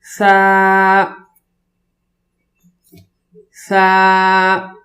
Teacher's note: زبان کو دونوں دانتوں کے درمیان میں رکھ کر اور زبان کی تھوڑی سی نوک باہر ہو، پھر آواز نکالیں گے